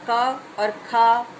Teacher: जिह्वा मूल में हम केवल हमारा क और ख वर्ण है जो उच्चारित होते हैं।